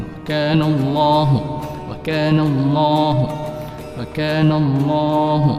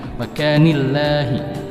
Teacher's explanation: Lam tafkhim atau lam taglis dipertebalkan. Wa kana Allah, Allahnya dipertebalkan.